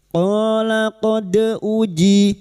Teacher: Qala qad uji dal sukun huruf dal yang mati asli di tengah kalimat qalqalah sugro. Jangan lupa dipantulkan.